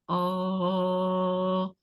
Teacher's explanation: if we are using the back area of the tongue we are going to say this is a back vowel like oh